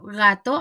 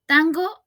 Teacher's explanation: el alófono G en una posición inicial esto quiere decir al inicio de la palabra o después de pausa y después de un fonema nasal por ejemplo gato al inicio y tango en la mitad tango